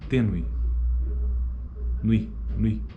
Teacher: A proeminência está na segunda vogal, no E. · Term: ditongo crescente